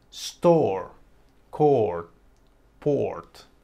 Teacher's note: hay un sonido vocal distintivo cuando la r se combina con el sonido vocal ɔ